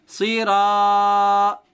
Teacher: صاد زیر سی، را الف زبر را، صیرا. الف سے پہلے را پر زبر ہونے کی وجہ سے الف مدہ ہوگا، الف مدہ کو تھوڑا کھینچ کر پڑھیں گے